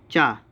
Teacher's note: तो चा तालव्य भी होता है, सही है, महाप्राण नहीं होता है